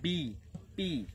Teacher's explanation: বি এবং পি আমরা দুই ঠোঁটের সাথে মিলিয়ে পড়বো